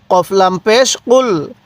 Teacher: এই কফটা উচ্চারণের সময় গলার মধ্যে হালকা ধাক্কা দিব